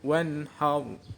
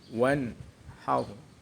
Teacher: Wanhar. Hukum bacaan idhar halqi. Karena ada nun sukun bertemu ha. Cara membacanya nun sukun dibaca jelas.